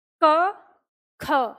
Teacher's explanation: क की तुलना में ख बोलने में ज्यादा हवा बाहर निकलती है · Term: महाप्राण